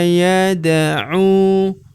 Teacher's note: huruf u kita panjangkan dua harakat karena terdapat wau sukun di depannya. Alifnya tidak dibaca atau dianggap tidak ada.